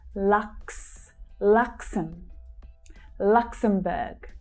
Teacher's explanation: So we have the /ks/ consonant sounds together.